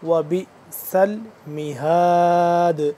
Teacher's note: یہ با آگے مل رہا ہے حمزہ کے ساتھ, ٹھیک ہے, تھوڑا سا جھٹکا ہوگا. با حمزہ زیر بی.